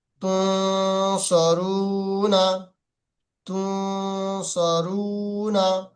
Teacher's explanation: নুন সাকিনের পরে সদ এসছে, এই সে সদ হরফে ইকফার 15টি অক্ষরের মধ্যে থেকে সদ এসছে, সেই জন্য গুণনা করতে হচ্ছে। নুন সাকিনের পরে সদ আসার কারণে গুণনা হচ্ছে।